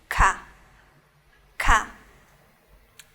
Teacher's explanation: Ka es como agregarle un poco más de fuerza, más de aire. Si quiero decir ka, voy a sacar aire y voy a decir ka, ka. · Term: aspiradas